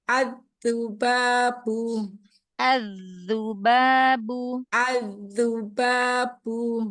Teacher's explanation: syiddah jaharkan lagi baknya, tahan nafasnya.